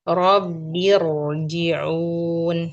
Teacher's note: Sekali lagi, ro-nya diberikan durasi. Ro sukun.